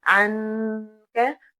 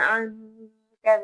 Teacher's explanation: یہاں پر ہم نون پر غنہ کریں گے جس کا مطلب یہ ہے کہ گنگناہٹ کی آواز آئے گی، یعنی اخفا ہوگا، کیونکہ نون ساکن کے بعد کاف آ رہا ہے جو کہ نہ حروف حلقی میں سے ہے، نہ یرملون میں سے ہے، نہ حرف با ہے۔